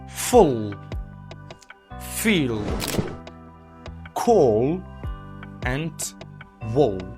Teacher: The back of your tongue rises slightly giving you the sound darker quality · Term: dark l